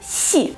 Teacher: Звук должен получиться немножечко шепелявым.